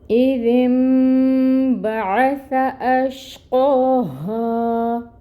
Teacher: اس ذال کو نون کے ساتھ ملائیں گے، اور نون کی جو آواز ہے اس کو ہم میم سے بدل دیں گے · حمزہ کے نیچے کسرہ محقق ادا کریں گے حمزہ کو، اور جو کسرہ ہے زیر کی حرکت ہے 1 کاؤنٹ ادا ہوگی اور حمزہ محقق ادا ہوگا۔ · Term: اقلاب